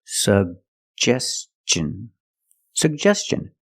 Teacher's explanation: suggestion put the stress on the second syllable